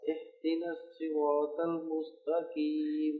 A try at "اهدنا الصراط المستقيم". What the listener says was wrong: اب یہ جو ہا ہے یہ حلق کی نہیں ہے، یہ سینے سے آئے گی. اہدنا الصراط المستقیم.